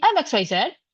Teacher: my tone rises at the end. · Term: upward inonation